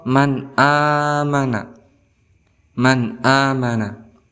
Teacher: cara bacanya tidak boleh didengungkan tidak boleh secara dengung dua harokat tidak boleh tetapi harus langsung amanah seperti itu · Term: izhar halqi